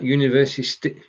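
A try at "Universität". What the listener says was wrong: you made the mistake of pronouncing one word in english because it's so close to English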